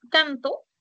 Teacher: cuando tú dices canto al momento que articulas el sonido de la n la punta de tu lengua está cerca de tus eh de tus dientes